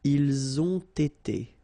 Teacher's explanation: So same thing here. You get first the liaison z, and then you get the t.